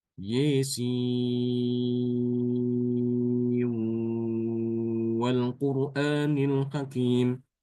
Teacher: bacaan imam subah adalah dengan mengidgamkan nun ke dalam wawu · Idgham dengan gunah, ya. Idgham dengan gunah, dengan dengung.